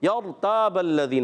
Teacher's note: را ساکن سے پہلے زبر آ گیا، را کو پر پڑھیں گے، اور تا علی مدہ ہے، ایک الف کھینچیں گے، با کی زبر کو لام سے ملانا ہے، لام مشدد ذرا رک کر ادا کریں گے۔